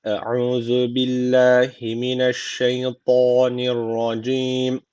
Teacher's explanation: Allah lafzı burada ince okunması gerekiyor. Çünkü öncesindeki harfin harekesi altta.